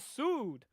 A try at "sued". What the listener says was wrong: Why do you put the emphasis on the ood part? You're like sued. Why not just sued?